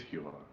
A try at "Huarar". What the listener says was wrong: No, there's two R's in his name. It's like Huarar. Huarar.